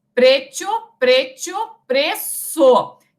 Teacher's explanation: Então, vejam, primeiro também tinha-se o hiato, que passa a ditongo, e depois aqui a assibilação. A transformação desse grupo, consoante com semivogal, a uma consoante sibilante, é a consoante que faz o sibilo, o som do S.